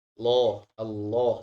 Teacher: Tadi sudah saya sampaikan bahwa ya bagian tengah lidahnya, bagian lidah belakangnya naik. Allah, Allah. Jadi menghasilkan suara yang tebal dan besar. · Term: Lam tebal